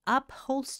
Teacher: в английском звук это просто выдох и очень сложно его После согласного звука произнести поэтому здесь кажется как будто его нет На выдохе на выдохе все на выдохе и получается нечто чуть-чуть